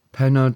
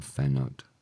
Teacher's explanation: Pennod has become phenod. And that's because the conjunction causes aspirate mutation, just like it did with C to chroeso, chroeso to chroeso.